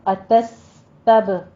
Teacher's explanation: تس سین پہ سیٹی کی آواز آئے گی، ہمس کی آواز آئے گی ساتھ میں ، تب، تب میں قلقلہ کرنا ہے، با کے اوپر، با